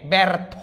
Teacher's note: পরে যদি ব্যঞ্জন বর্ণ থাকুক এরা তিনজন থেকে কেউ একজন থাকুক এ জফলাটা একার উচ্চারণ হয়ে যাবে ব্যর্থ জফলার পরে যদি ধনি থাকে এটা এক কারান্ত হয়ে যাবে